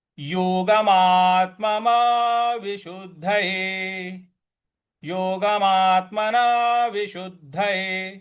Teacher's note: यहाँ मात के ऊपर आघात देंगे, फिर विशुद्ध शुद्ध यहां पर हम आघात देंगे, बल लगाएंगे